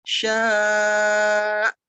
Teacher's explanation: Kurang panjang sama kurang menekan ke hamzahnya. Jadi kayak dihentak.